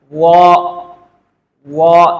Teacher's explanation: جب ہم اس کو منہ بھر کے پڑھیں گے، سب سے پہلے زبان کے سرے کو اوپر سامنے کے دو بڑے دانتوں کے کناروں سے لگانا ہے، اس کے بعد اس کا تلفظ کرنا ہے، وا۔ اس میں واو کی آواز نہیں لانی چاہیے · ان میں کچھ فرق ہے، وہ یہ کہ یہ تینوں حروف نرم ادا ہوتے ہیں، لیکن وا کو ہم نے موٹا پڑھنا ہے، اس کو منہ بھر کے پڑھنا ہے۔ جب ہم اس کو منہ بھر کے پڑھیں گے، سب سے پہلے زبان کے سرے کو اوپر سامنے کے دو بڑے دانتوں کے کناروں سے لگانا ہے، اس کے بعد اس کا تلفظ کرنا ہے، وا۔